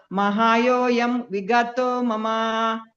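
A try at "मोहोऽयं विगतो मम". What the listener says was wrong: ಅಲ್ಲಿ ಮಹಾಯೋಯಂ ಅಲ್ಲ, ಮೋಹೋಯಂ. ಮೋಹ ಅಯಂ ಮೋಹೋಯಂ.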